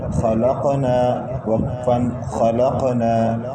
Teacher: قاف حروف قلقلہ میں سے پہلے سے ساکن ہے، اس پر قلقلہ کیا.